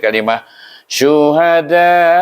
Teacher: Iaitu kerana dia bertemu dengan hamzah dalam satu kalimah, kita menggunakan hukum mad wajib muttasil, maka kita baca da itu 4 atau 5 harakah